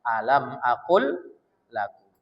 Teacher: Maka lam pertama tak lagi dibaca langsung lam keduanya ditasdidkan. Jadi lam pertama itu dimasukkan ke lam yang kedua. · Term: idgham mutamasilain